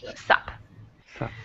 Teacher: the what completely gets taken off. All you keep is the S. So sup means what is up, but we cut off the what.